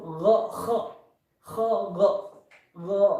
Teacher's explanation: makhrajnya yaitu pada pangkal ini lisan, pangkal lidah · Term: huruf gha